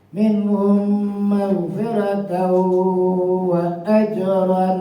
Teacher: Tanwin bertemu wawu itu idgham bi guna, masukkan bunyi tanwin ke huruf wawu. Minhum maghfiratan sampai ditahan.